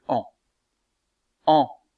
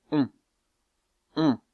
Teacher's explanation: la voyelle en est une voyelle postérieure arrondie et nasale mais c'est une voyelle ouverte tandis que la voyelle on est une voyelle mi ouverte elle